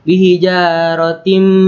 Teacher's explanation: Hai bihijaratim karena huruf tak berharakat kasrah tanwin bertemu huruf mim dibacanya masuk dengan dengung dan ditahan sampai 3 harokat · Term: idgham